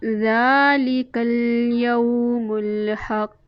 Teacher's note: ज़ाल के ऊपर खड़ी ज़बर एक अलिफ के बराबर हम उसको खींच कर लंबा करेंगे।